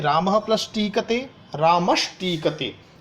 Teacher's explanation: विसर्ग के स्थान पर ष षटकोण वाला हो जाता है सत्व संधि में